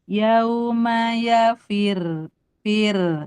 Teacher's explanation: Nah, kalau diwasol saja dia dibaca tebal, Bu. Kalau waqaf berhenti maka jadi tipis karena r-nya disukunkan · Kalau diwasol dia tebal tapi kalau berhenti yauma yafir fir tipis tapi tasdidnya tetap ada